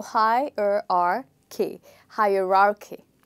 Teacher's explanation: You stress here on the first syllable.